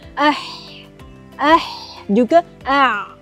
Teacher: kawasan permulaan asal lidah dengan dinding belakang tekak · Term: tengah kerongkong